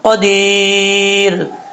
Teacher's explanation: دال کے بعد یا مدہ ہے، ایک الف کی مقدار لمبا کر کے پڑھیں گے. جب را کو ساکن کریں گے عارضی طور پر تو یہاں پہ مد عارض وقفی بھی ہو سکتی ہے، اڑائی الف کے برابر آپ اس کو لمبا کر کے پڑھ سکتے ہیں.